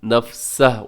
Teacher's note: وقف کریں گے تو نفسہ، الٹا پیش کو ساکن کر دیں گے